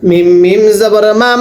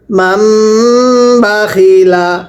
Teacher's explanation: মিমকে মিমের সাথে লাগায়া গুণনা করতে হবে